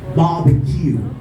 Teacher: If you say barbecue, then you're doing You stress all of the syllables, which is not supposed to be pronounced as that. But stress on first with the primary stress, and on the last syllable with a secondary stress.